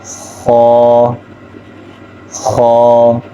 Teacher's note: اور غین اور خا یہ حلق کے اوپر والے حصے سے ادا ہوتے ہیں